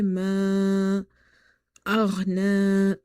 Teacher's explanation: Ghain is heavy, is from the musta'aliya letters. · So ma aghna, after alif madda you see hamza in the next word, so you will stretch this alif which is madda here up to 2.5 alifs